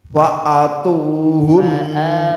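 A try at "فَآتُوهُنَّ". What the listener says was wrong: Panjang.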